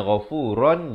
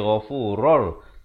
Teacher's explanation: idgham bila gunnah, masuk tanpa dengung. Asalnya ghafuran jadi ghafurur.